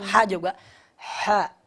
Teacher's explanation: Lalu huruf 'ha' juga, 'ha', udara pasti keluar